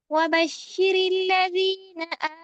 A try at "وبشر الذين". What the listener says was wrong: بشر اللہ نہیں، بشر اللہ. دیکھیں شین کی حرکت پوری ادا نہیں ہوئی، شین کی حرکت ایسے پوری ادا نہیں ہوتی ہے. وبشر الذین، شی پورا کریں.